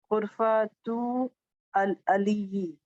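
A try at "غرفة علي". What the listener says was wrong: Ghurfatu aliyin. Because this is tanween, so it will be tanween. Ghurfatu aliyin.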